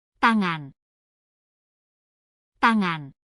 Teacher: Karena apa sih? Karena bunyi T ini dihasilkan ketika ujung lidah menyentuh langit-langit, tepat di belakang gigi atas. Terus menahan udara, lalu dilepaskan tanpa getaran pita suara. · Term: bunyi hambat tak bersuara